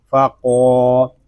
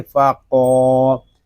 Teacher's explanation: قاف کھڑا زبر قا، اش قا، ہا الف زبر ہا، اش قا ہا، وقف میں پڑھیں گے اذ انبعث اشقاها، فا زبر فا، قاف الف زبر قا، فقا، یہاں قاف حروف مستعلیہ میں سے ہے، اس کو پوری یعنی موٹا پڑھیں گے۔ آگے الف مدہ ہو رہا ہے، قاف کو ہم ایک الف تک کھینچ کر پڑھیں گے، فقا، اس کو فقا اس طرح نہیں پڑھیں گے، اس کو پڑھیں گے فقا۔